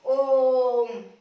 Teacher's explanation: जैसे हम ओम बोलेंगे तो इसको यहाँ पर लगाएंगे, यहाँ पर इसको लगाएंगे। इसकी ध्वनि जैसे ओ की ध्वनि है वो लंबी चली जाएगी, ओ की ध्वनि क्या है वो लंबी चली जाएगी और फिर मैं बोला जाएगा ओम, ऐसे। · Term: प्लुत स्वर